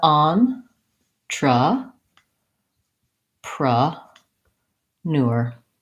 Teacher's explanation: And then we can see these upside down e sounds. These are vowel schwa sounds. They sound like a.